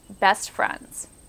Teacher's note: the St at the end of best and the F at the beginning of friends overlap on one another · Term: coarticulation